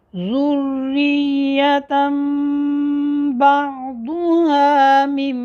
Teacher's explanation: نون ساکن اور نون تنوین دونوں کا کیا کریں گے، میم سے بدل کر پڑھیں گے